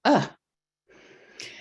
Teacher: this is schwa floating in the middle that's the indistinct vowel that's pronounced uh